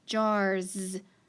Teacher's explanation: listen to that s jars since it makes that z sound